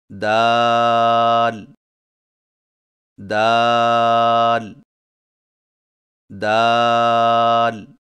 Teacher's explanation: دال کی ادائیگی میں زبان کی نوک کو سامنے والے اوپر کے دو دانتوں کی جڑ سے لگا کر باریک آواز میں پڑھیں، یعنی دال دال دال.